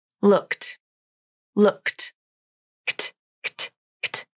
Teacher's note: If the last sound of a verb is voiceless, like the k consonant in the word look, then the ed ending makes a t sound. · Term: The KT cluster